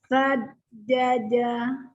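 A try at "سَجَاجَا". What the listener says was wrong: Jimnya panjang. Yang di depan yang dipanjangin. Saja, kan ada alifnya kan?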